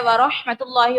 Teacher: اللہ تبارک و تعالیٰ کے نام کو پر پڑھیں گے کیونکہ اس سے پہلے پیش ہے